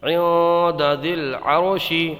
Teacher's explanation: یہاں پر اخفا ہوگا، نون ساکن کے بعد حروف اخفا میں سے دال آیا ہے تو یہاں پر غنہ کر کے پڑھیں گے، اخفا میں غنہ کر کے پڑھا جاتا ہے. اور یہاں پر را کو پر پڑھیں گے کیونکہ را ساکن سے پہلے زبر ہے، تو را یہ جو پر صورتیں ہیں ان میں یہاں پر یہ را پر پڑھا جائے گا.